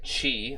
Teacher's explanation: It's the voiceless uvular fricative consonant